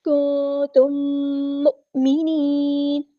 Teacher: حمزہ ساکن کی آواز میں جھٹکا آئے گا اور نون کو ہم ساکن کر دیں گے وقف کرتے ہوئے · میم ساکن کے بعد میم ہے ادغام شفوی ہو رہا ہے ، ایک الف کے برابر ہم یہاں پہ رکیں گے، کنتم